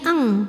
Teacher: ikhfa ab'ad karena ada nun sukun yang menghadapi huruf Kaf maka Nun sukunnya dibunyikan samar-samar siap-siap menuju Kaf disertai bunyi dengung jadi ini bunyinya Ang dengungnya besar karena Kaf ini makhrajnya jauh